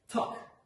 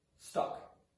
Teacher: the realization of this t phoneme is aspirated when it comes in the environment of being at the beginning of a word